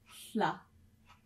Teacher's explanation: With that L with a slash, you use the side of your tongue